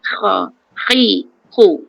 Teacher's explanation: Macam dia berkeladak sikit. Macam kita nak berkahak tapi jangan kha sangat-sangat. Macam ada kan kha.